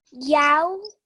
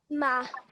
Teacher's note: the sound that the ya would normally make is eased into the waw leen, and it becomes a yao ma